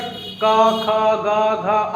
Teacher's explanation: याद रखना, कंठव्य। कंठ से होता है इसलिए कंठव्य कहा जाता है